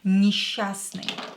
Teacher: S and cha here will be pronounced as sha.